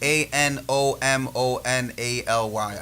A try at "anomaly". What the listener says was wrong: Nah, you added an extra syllable in there, I think. M-O-L-Y.